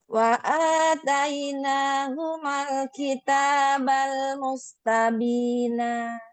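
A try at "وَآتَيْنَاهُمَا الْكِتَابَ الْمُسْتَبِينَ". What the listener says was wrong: Cantik.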